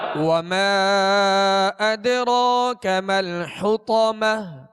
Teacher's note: وما پہ مد ہے اور دال ساکن ہے اور دال پر قلقلہ کریں گے. اسی طرح را پر کھڑا زبر ہے، را کو پر پڑھیں گے، ایک الف کی مقدار کھینچ کر پڑھیں گے.